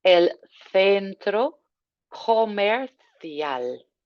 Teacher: Watching those C's that are coming out with a nice th sound.